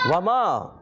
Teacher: वमा, वाव की अदायगी होती है होठों की, मीम अलिफ ज़बर मा अलिफ मद्दा एक अलिफ खींच कर अदा करेंगे